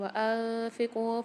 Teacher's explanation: وأنفقوا میں نون ساکن کے بعد فمال غنہ کے 15 حروف میں سے فا آ رہی ہے، تو یہاں پر غنہ کر کے پڑھیں گے ہم